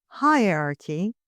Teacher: pronounced with a weak H. So you hear it, but you hear it slightly.